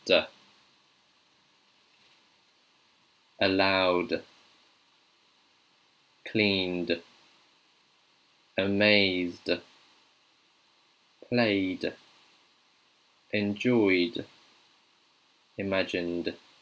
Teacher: Duh. This is voiced. You can really hear the duh when you're saying duh. You can feel the vibration. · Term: D sound